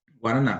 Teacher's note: no caso de guaraná a sílaba tônica ela é a terceira sílaba